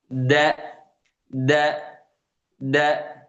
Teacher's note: Mungkin terdengarnya cadel, tapi dalam bahasa Arab inilah yang benarnya gitu. Ya, da bukan dari ujung lidah dengan langit-langit mulut bagian tengah, tapi dari ujung lidah dengan gigi seri bagian atas yang pangkalnya gitu. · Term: huruf dal